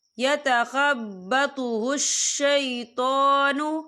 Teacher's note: تو کے پر کھڑی حرکات ہے تو اسے ہم 2 یا 3 حرکت کے برابر کھینچے پڑھیں گے